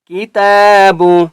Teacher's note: ذالک الکتاب، کاف زیر کی، تا کھڑا زبر تا، تا کے اوپر بھی کھڑا زبر ہے، تا کو بھی ہم نے 1 الف کی مقدار کھینچ کر پڑھنا ہے